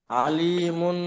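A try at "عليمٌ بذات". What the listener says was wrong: আলিমুম। কারণ তানবিন আসে না মিমের উপরে। হ্যাঁ, মিমের উপর দুই পেশ তানবিন, তো তানবিনের পরে বা এসছে, তো তানবিনকে মিম দ্বারা পরিবর্তন করতে হবে, তো আলি মুনের জায়গায় আলি মুম। মুম মানে মিম ধরতে হবে ওখানে আর কি।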